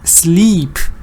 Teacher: That long E. That's not a schwa. This is a long E.